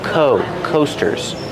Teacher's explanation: Use the long O sound like no and go. Coasters. These are called coasters.